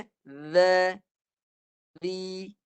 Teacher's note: Dia tak boleh menahan suara zal ni. Zal ni kalau nak bunyikan dia, kena guna suara. Tak boleh ada desiran, nafas, semua tak boleh. Suara semata-mata. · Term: huruf zal